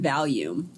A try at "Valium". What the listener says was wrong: Valium. Not volume, but Valium.